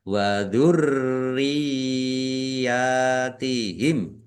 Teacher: ya tasdid yang didahului dengan kasrah dibaca ditekan dibaca ditahan kedua harakat ini mad tamkin